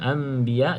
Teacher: Anbiya okey, mim ada tanda mim ekornya ke bawah kena baca dengan bacaan iqlab, iaitu kita tutup mulut, tukar nun kepada mim.